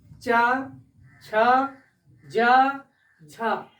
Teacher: हमारी जीभ कहाँ टच हो रही है, दांत के जस्ट ऊपर अर्थात तालु पर। तो इसे क्या कहते हैं, तालु कहते हैं।